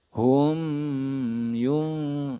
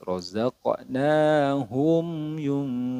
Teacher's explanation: Apa yang dibaca jelas yaitu mim sukunnya jadi tidak boleh didengungkan di sini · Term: izhar syafawi